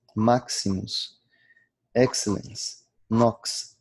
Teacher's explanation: O X tem sempre o som de X, KS